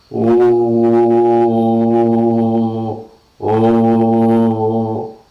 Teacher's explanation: Alright, and now we look at the sixth cardinal vowel. It is articulated with the back of the tongue, half open position, vowel height, half open position, but rounded.